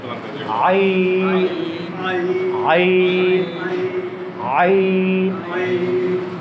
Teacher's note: আইন আমি কিভাবে উচ্চারণ করছি হরফটি? আমি গলার ঠিক ওই মাঝখানটা চাপ দিচ্ছি। · আইন কোত্থেকে উচ্চারণ করছি? এই যে কণ্ঠনালীর মধ্যখান থেকে।